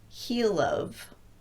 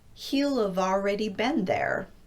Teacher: So he will have in its contracted form would sound like he'll of. I'm showing the L in both syllables in the phonetic representation just to make sure that you keep that L going into the next syllable. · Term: double contraction